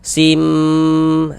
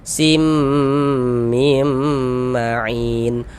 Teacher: Nah, waka sim, kemudian digunnahkan. Di bagian simnya itu suaranya itu kita tahan, kita panjangkan sejenak. Sim, kita gunnahkan sepanjang 2 harokat. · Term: idgham bi gunnah